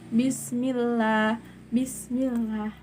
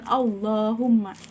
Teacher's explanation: Lam tarkik membaca huruf lam pada lafaz Allah dengan tipis.